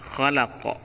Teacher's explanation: dia hukumnya Qalqalah dan harus di pantulkan